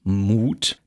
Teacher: da haben wir im Kern einen Einsilbler Stamm und der Akzent sitzt dann auf dieser einen Silbe